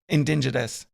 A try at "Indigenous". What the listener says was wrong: There's no N there at the indigenous.